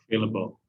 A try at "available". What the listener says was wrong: so the end should be a bull instead of able so available available